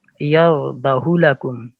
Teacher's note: पेश को पेश ही रहने दिया गया है, वाव मद्दा की आवाज या उल्टा पेश की आवाज नहीं आई